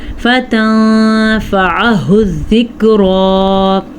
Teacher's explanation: ہا کو دیکھیں ہم نے چھاتی سے نکالنا ہے اور عین کو ہم نے حلق سے نکالنا ہے